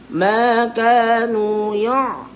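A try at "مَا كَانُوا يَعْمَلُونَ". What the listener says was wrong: Tu 100% bunyi kat hidung. Jadi sengau. Huruf A'in ni.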